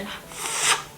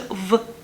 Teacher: f is, of course, voiceless in comparison to v, which is voiced.